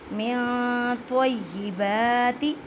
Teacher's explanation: خیال رکھیں کہ تا کی آواز نہ آئے کیونکہ یہ حروف مستعلیہ یعنی موٹے حروف میں سے ہے